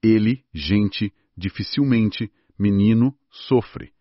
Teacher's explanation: a troca do e por i do o por u em sílabas átonas, principalmente no final da palavra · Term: alçamento da vogal